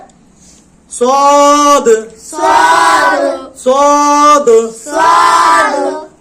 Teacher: জিহ্বার আগা সামনে নিচের দাঁতের সঙ্গে লাগিয়ে পড়তে হবে।